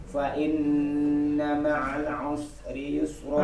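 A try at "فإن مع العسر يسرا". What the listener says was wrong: Nah, sekarang ma'alnya jangan kecepatan. Ma'al us. Fa inna ma'al usri yusra.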